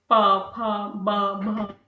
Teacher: किसी में हमारी जीभ हमारी तालू पे टच होती है, किसी में हमारा मुंह बंद होता है, किसी में हमारे होठ जो है वो आपस में टच होते हैं, लाइक प फ ब भ, इसमें हमारे जो लिप्स हैं वो एक दूसरे को टच करते हैं।